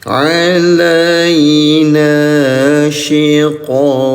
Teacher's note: Qaf sukun, warna ungu, cara bacanya pantulkan, namanya qalqalah